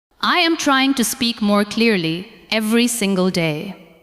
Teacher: give a little more stress to the words trying, speak, clearly, and day. Let the other words stay softer and lighter.